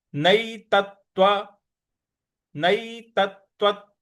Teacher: जो आधा त है इस पर थोड़ा सा बल लगाना है।